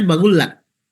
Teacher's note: Di Mekah justru qaf dibaca ghin.